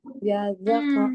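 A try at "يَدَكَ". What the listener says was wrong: bukan the, tapi da. Da. Bedain da ini sama yang ada titiknya. Beda ya. Kalau yang ada titiknya di ujung gigi. The. The. Tapi kalau yang nggak ada titiknya, dia di yang dekat gusi, yang pangkal. Da.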